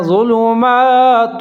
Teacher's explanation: فیہ ظلمات، زوا کے اوپر پیش ہے، لام کے اوپر پیش ہے، میم کے اوپر کھڑا زبر ہے، ایک الف کے برابر لمبا پڑھنا ہے